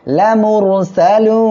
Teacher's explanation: এখানে আয়াতের শেষ, আমরা এখানে ওয়াকফ করলে নুন সাকিন হয়ে যাবে। আর এক আলিফ মদের পরের অক্ষরে ওয়াকফের কারণে সাকিন হওয়ায় 3 আলিফ টেনে পড়তে হবে